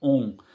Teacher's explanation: on ne fait pas résonner à la fin le son M, mais bien le son NG, on, une nasalisation du N, on.